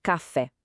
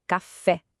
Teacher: Percebe como o fé sobe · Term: sílaba tônica